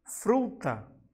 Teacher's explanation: Aqui, o fru é a sílaba de maior intensidade. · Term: sílaba tônica